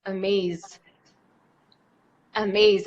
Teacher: it ends in a Z sound and again I put my hand on my throat I feel a vibration so that's a voiced sound and so it just takes the D amazed amazed another example